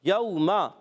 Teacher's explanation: میم کا مخرج دونوں ہونٹوں کا تر حصہ · یوم، واو لین ہے، واو ساکن سے پہلے زبر آ رہا ہے، واو لین نرمی سے ادا کریں گے.